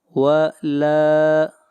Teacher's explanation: لام کو کھینچ کر پڑھیں گے، ایک الف کے برابر الف مدہ ہے۔